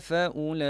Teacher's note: Kalimah ini adalah dihukum sebagai mad wajib muttasil lah, mad muttasil, dibaca dengan 4 ataupun 5 harakat